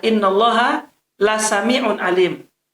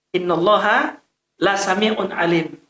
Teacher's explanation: Itu lamnya pendek, satu harokat